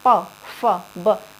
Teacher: होठ अपने आप बंद हो रही है, अपने आप पता चल रहा है कि ये पवर्ग है, यानी कि ये ओष्ठ है।